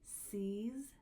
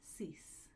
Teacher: This is a voiced Z and an unvoiced S.